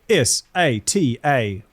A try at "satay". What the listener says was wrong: See, that's where you're losing us because there's no R in there. You're saying satay. Satay. Satay.